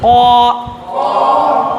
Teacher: قا زور سے نکالیے، حلق سے، حلق سے اندر سے